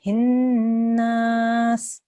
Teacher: Make sure you hold on the hin for the 2 seconds.